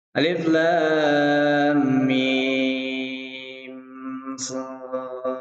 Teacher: kalau ada mim mati bertemu dengan sod itu jelas di situ ada hukum idhar syafawi ya. Jadi dibacanya jelas.